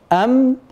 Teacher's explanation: الخيشومي وهو الغنه بينهما تلازم المخرج اللساني مع المخرج الخيشومي ايضا بالنسبه للميم تاتي على جزئين المخرج الشفوي ام والمخرج الخيشومي للغنه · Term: الميم